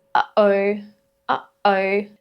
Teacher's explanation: Think about the phrase uh-oh, uh-oh, that little hiccup in between the 2 parts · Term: glottal stop